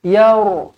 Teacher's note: Ra tebal sebab huruf sebelumnya berbaris atas